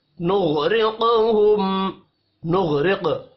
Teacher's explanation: نغرقہم، نغرق، غین اور قاف پر پڑے جائیں گے، قاف ساکن ہے، قلقلہ کریں گے، را کو زیر کی وجہ سے باریک پڑھنا ہے۔ · میم ساکن کے بعد فا ہے، اظہار شفوی ہوگا، غنہ نہیں ہوگا۔